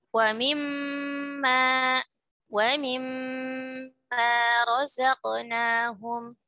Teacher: Nun sukun bertemu mim, maka dia menempati akmal, gunnah yang akmal, ya. Jadi pertama adalah tingkatan akmal, yaitu nun mim bertasydid dan nun mim pada keadaan idgham bi gunnah atau pada keadaan idgham mislain, ya.